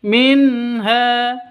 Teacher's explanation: nun mati bertemu dengan ha jelas terang karena bacaan izhar halq tidak boleh disentak tidak boleh didengungkan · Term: izhar halki